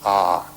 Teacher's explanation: You start in the back of the mouth, ah, and then oo, you fill the mouth, and closes at the mouth. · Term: Om